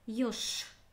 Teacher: Написана буква Ж, а звучит как Ш.